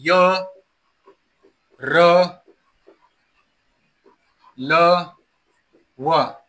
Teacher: ते उच्चारण करण्यासाठी आपल्या जिभेचा जो स्पर्श आहे आपल्या मुखातील अवयवांना तो मध्यम प्रमाणात होतो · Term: अंतस्थ वर्ण